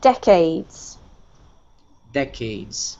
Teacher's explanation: This one here is the emphasis is on the first syllable